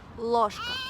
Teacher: These two sounds are really different for us Russians. So in case of ложка, the consonant L sounds really hard. So we call it hard L.